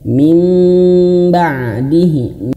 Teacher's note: nun mati bertemu huruf ba maka bibirnya dirapatkan